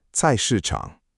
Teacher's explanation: The last syllable is 场, third tone in Pinyin here as 场, but in natural speech, it can feel light.